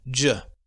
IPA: dʒ